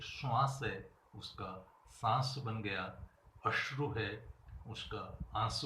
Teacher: इसी प्रकार अनुनासिकीकरण, जो ध्वनियाँ पहले अनुनासिक नहीं हो किंतु बाद में अनुनासिक हो जाए।